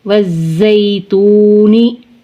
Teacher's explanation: واو ساکن سے پہلے پیش ہے، واو مدہ کھینچ کر پڑھیں گے · لام تعریف کا زا میں ادغام کریں گے۔ واو زا زبر وزا یا زبر زئی، وزئی۔